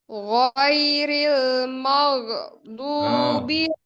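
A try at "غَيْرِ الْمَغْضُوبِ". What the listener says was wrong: Bukan mag. Bukan mag. Jadi siddah tadi kalau mag.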